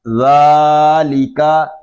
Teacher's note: ذال کو ہم ایک الف تک کھینچ کر پڑھیں گے کیونکہ یہاں پہ کھڑا زبر ہے